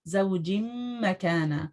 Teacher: آپ کا ادغام باغنہ ہو رہا ہے